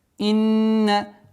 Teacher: Удержание назализации в размере 2 огласовок.